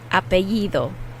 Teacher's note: the d is a soft d so it's like the th sound in english